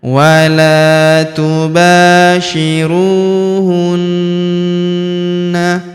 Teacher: Huruf ru kita panjangkan dua harakat karena wau sukun di depannya. · Wala tubashiruhunna, huruf na kita tahan dan kita tekan, serta kita dengungkan 2-3 harokat karena terdapat tanda tasydid di atasnya